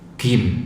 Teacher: kalau orang Mesir biasanya baca gim ya, terlalu ke belakang gim, terlalu ke mendekati qaf ya, jim di tengah ya.